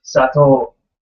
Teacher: it's OU, but it's just a long O.